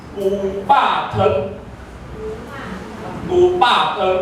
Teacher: 些声是这样变的。我举一个例子就好，我讲好佳在我会晓讲，啊无我若袂晓讲，我来读这个规则，我去路表哦，拍一下，牛第5声对不对？牛吧安怎讲？牛吧你读牛吧的时阵，甲牛敢有相共？变第7声了，对不对？牛变第7声了，对吧？你本来牛，你袂读牛吧嘛，吼，你一定读牛吧。啊，你若后壁再加一个汤变牛吧汤的时候，你的吧佫变调啊。吧本来是3声，对不对？它变成2声，所以咱讲牛吧汤， 牛吧汤那个吧是已经从3声变2声